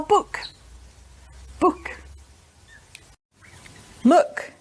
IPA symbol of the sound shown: ʊ